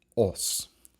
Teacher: the N disappears before the S because we are dealing with an Ingvaeonic language, and therefore that A becomes longer. And then you also have the U in ANSUZ, the proto-germanic form ANSUZ, which rounds that A.